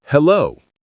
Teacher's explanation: It has two parts with the stress on the second part.